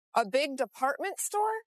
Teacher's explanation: raising her voice at the end of a sentence to make sure she understood about the department store